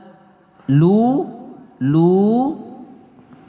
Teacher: domah atau berbaris di depan diikuti oleh Wau Wau sukun ya wau sukun juga dibaca panjang satu Alif dua harakat